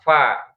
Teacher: Fa itu kan di bibir ya. Ujung gigi seri bertemu dengan perut bibir bawah. Fa, itu kan mudah.